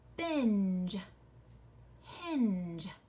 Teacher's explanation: you hear an N before each one of the j sounds at the end of these words